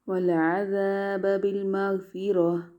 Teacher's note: وقف میں کیا کریں گے؟ تا کو گول ہا کے ساتھ بدل دیں گے